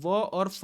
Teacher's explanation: जब आप व और फ बोलते हैं तो आपके ऊपर के दांत और नीचे का होंठ दोनों एक दूसरे के साथ मिलते हैं, तब जाकर के आपके मुंह से व और फा की ध्वनि निकलती है।